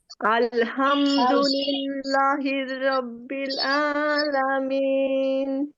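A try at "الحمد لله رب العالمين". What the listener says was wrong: চমৎকার হয়েছে। আপনার এই লাটা একটু টান দিলে আরো বেশি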